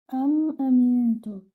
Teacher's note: Here you will have to do ikhfa, that means hide your noon.